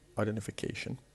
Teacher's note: the word identification is composed of 6 different syllables, and the one that has the stress is the one before the last, the 5th syllable